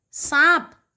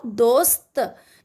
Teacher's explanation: तो आप जैसा बोलेंगे, दंत स सांप, दंत स दोस्त, दंत स आ रहा है, देखो दोस्त। जब आप बोल रहे हो दोस्त तो स बोलते वक्त आपकी जीभ दांतों को छूती है ना